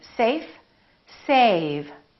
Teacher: notice how a was longer with the V then with the F